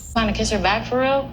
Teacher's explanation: drastically reduces the vowel sound in the word real